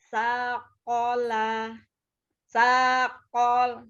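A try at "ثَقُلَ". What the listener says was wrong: Jangan di call. Ko saja, kola ya. Jangan kola, tidak ditasdid lamnya. Saqala.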